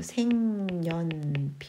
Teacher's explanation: 니은 첨가가 된 다음에 니은의 영향으로 비음화가 일어나는 겁니다. 자, 니은 첨가가 먼저 되고 그 다음에 비음화가 돼요.